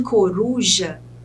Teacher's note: No caso de coruja, que a sílaba tônica é ru, é a penúltima sílaba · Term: paroxítona